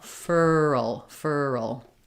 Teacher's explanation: And what I usually recommend is trying to think about it like two parts, that we have our fur and then we go to our dark L, furl, furl.